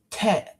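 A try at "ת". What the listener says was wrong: it's a T sound, but this is not a tet, it's a tub. And I need to change that because it's not a th sound, despite what they say.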